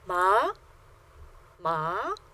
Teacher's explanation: second tone starts about midway on your personal register and rises to the highest point on your personal register